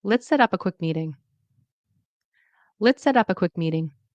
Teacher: You notice that turns into a D sound as well, a fast D. And there's a falling tone because it's a suggestion. · So notice that the stress is on set, up, quick, me, meeting.